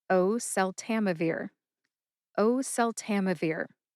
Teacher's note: I notice that I hold on to that first syllable, o, at the start of oseltamivir · Emphasize O and Tam. Tam gets the most emphasis.